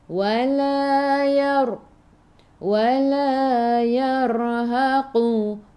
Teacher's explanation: Ra ada sukun. Sebelum ra ada baris atas. Ra-nya kita baca tebal, lidah naik ke atas.